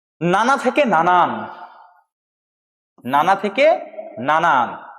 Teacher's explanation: এক্ষেত্রে শেষে একটা ন ব্যঞ্জন ধ্বনি আগমন ঘটেছে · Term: ব্যঞ্জন আগমন